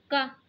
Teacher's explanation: कंठ यानी गले से करते हैं। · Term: का वर्ग